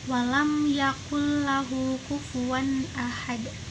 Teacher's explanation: keempat walam yakullahu kufuwan Ahad nah bagian yang kufuwan one itu karena dia tanwin bertemu dengan alif maka dibacanya jelas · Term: izhar halqi